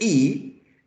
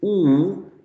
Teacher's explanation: you produce e, your tongue is closer to the teeth. When you produce oo, your tongue goes back.